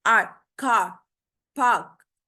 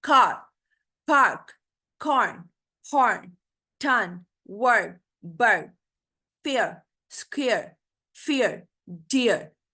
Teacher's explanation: यानी हम लोगों ने कंप्लीटली आर को प्रोनाउंस नहीं करना, लेकिन आर का एक जो कंटेंट है वो वर्ड के अंदर आएगा। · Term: आर कंट्रोल साउंड्स